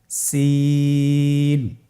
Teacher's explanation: জিহ্বার আগা সামনের নিচের দুই দাঁতের প্যাড ও আগার সঙ্গে লাগিয়ে উচ্চারিত হয়। জায়ের মতোই জায়ের যে মাখরাজ, সিনেরও একই মাখরাজ।